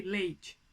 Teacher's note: é óbvio que o E tá muito mais forte do que o I. O I tá quase imperceptível aí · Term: semivogal